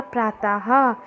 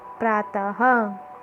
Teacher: इसको बोलते समय ह की आवाज़ आती है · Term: विसर्ग